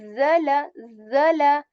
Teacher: this z has vibration, and this z is similar to the z of English letter z, right? But with a bit more intentional vibration